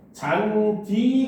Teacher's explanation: 잔디 같은 경우는 디귿과 이가 만났어도 우리가 이거를 잔지라고 안 한다는 거야